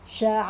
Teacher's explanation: ada tanda mat di atas ain dibaca 4 atau 5 harokat.